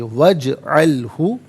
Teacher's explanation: یہاں جیم ساکن ہے لیکن ناظرین یہاں قلقلہ کیا جائے گا، آواز لوٹتی ہوئی محسوس ہونی چاہیے